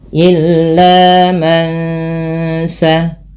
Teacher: Suara nunnya di sini awalnya man. Ketika bertemu sin, nunnya disamarkan kepada bunyi sin, terdengar bunyi eng. Maka ini kita namakan dengan bacaan tajwidnya ikhfa hakiki.